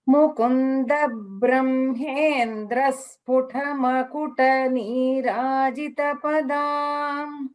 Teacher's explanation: The dvitvam was heard clearly, but a little bit I heard as a Mahaprana.